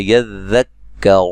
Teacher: ذال کو کاف سے ملانا ہے سختی سے، ٹھیک ہے، لیکن ذال کو نرم ادا کرنا ہے